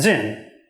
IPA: zɪn